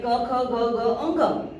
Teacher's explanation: सीधे गले से निकलते हैं, कंठ्य कहा जाता है उसको।